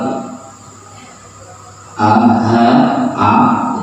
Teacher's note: huruf yang secara makhraj dia keluar dari tenggorokan alhad